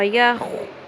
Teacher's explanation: خو کو پر کریں، خراش بہتر کریں